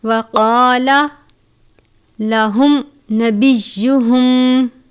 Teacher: میم ساکن کے بعد نون ہے، اظہار شفوی کا قاعدہ لگتا ہے، یعنی میم ساکن پر غنہ نہیں کرتے۔